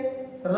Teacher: क्योंकि इसमें जीभ क्या होती है, जब हम रा का उच्चारण करते हैं तो जीभ में क्या होता है, कंपन होता है, इसलिए इसको हम क्या बोलते हैं, प्रकंपित व्यंजन बोलते हैं।